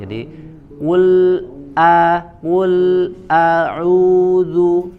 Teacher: lam dari lidah kemudian a-nya dari aqsal hal, dari pangkal tenggorokan.